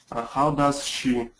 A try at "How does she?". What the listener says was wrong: Yeah, connect it faster. How does she?